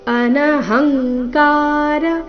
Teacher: ಅನಹಂಕಾರ ಹ ಮೇಲೆ ಆಘಾತ